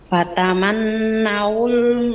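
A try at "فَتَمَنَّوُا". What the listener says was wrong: tahan. Fatamannaul ditahan dulu baru di wawunya. Bukan dipanjangin, ditahan. Beda panjangin sama ditahan. Fatamannaul, bukan fatamanna.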